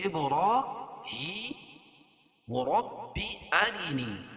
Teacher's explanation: اب با پر قلقلہ، را کھڑا زبر قائم مقام الف مدہ کے، اس کو ایک الف کے برابر کھینچ کے پڑھیں گے۔ ہی کھڑی زیر قائم مقام یا مدہ کے، اس کو ایک الف کے برابر کھینچ کے پڑھیں گے